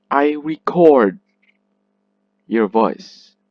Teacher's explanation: the RE is pronounced unstressed. It is pronounced weak and fast. Rec, not re.